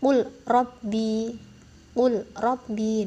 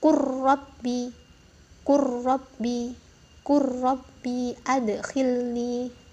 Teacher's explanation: Ini dihukumi mutaqarriban yang bacanya ini huruf lamnya diabaikan, kita masuk ke huruf ro-nya. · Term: Idgham mutaqarriban